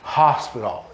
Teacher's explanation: Esse H nessa palavra é um H aspirado, hospital. E esse T tem um som meio D, meio T, né?